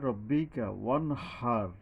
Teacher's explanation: ওয়া মানে 2 ঠোঁট গোল হয়ে আসবে। হা, এই যে লম্বা হা, কিছুটা শব্দ ভাব আসতে আসতে একটু সময় বেশি লাগে গোল হয়ে আসছে।